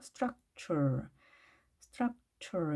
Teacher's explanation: structure도 마찬가지로 t가 취 발음이 났죠